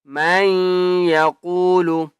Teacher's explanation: مَن يَقُولُ میم یا زبر میں اس نون کو نہیں پڑھنا یا کے اوپر تشدید ہے غنہ کریں گے